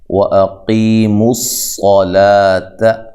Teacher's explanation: پڑھنا ہے، قی یا مدہ ہے، قاف کو موٹا کرنا ہے، صاد کو موٹا کر کے پڑھنا ہے یہاں